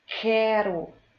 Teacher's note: Você só ouve o som do K. Você não ouve o som do U. Então, eu tenho aí um dígrafo porque ele apresenta apenas um som, diferente da palavra equestre.